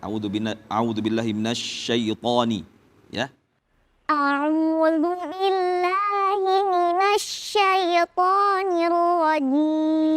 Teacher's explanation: tafasyi pada huruf shin diperjelas lagi.